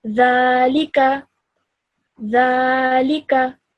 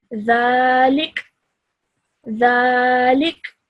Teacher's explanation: And in normal circumstances, if you weren't stopping, then you would read this as dhalika, dhalika. Now, if you were to stop, what would happen is the fatha will change into sukoon.